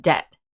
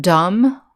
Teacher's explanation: in the word debt we have a silent b silent means there's no sound